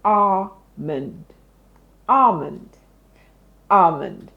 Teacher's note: There's no L there. It's telling you that the L in that word is silent.